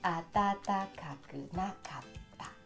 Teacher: Only tata and na are high and the others are low.